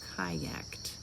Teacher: It ends with the K. It makes the T sound on the ED